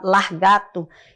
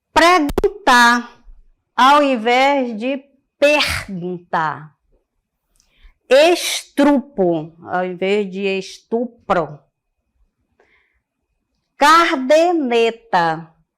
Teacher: deslocamento do r no interior da sílaba